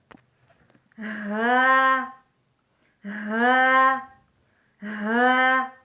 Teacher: واو واو واو واو ہونٹوں کو گول کرنے سے لفظ واو واو ادا ہوتا ہے۔ ہا ہا ہا لفظ ہا سینے کی طرف سے ادا ہوتا ہے، یعنی اقصی حلق سے ادا ہوتا ہے۔ اقصی حلق سینے کی طرف والے حصے کو کہتے ہیں۔